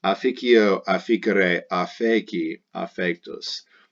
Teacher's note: The D just becomes an F due to ad assimilation